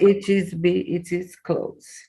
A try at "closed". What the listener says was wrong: it is closed. Not S, Z, closed. And that's the difference. That's the difference between close, perto, and close, de fechar, and closed, like fechado. Is the only difference is that S to Z sound. So it has to be right on, spot on.